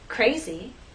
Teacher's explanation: R is a voice sound, but after these 3 consonant sounds, it begins voiceless and then becomes voiced as we go into the next vowel sound.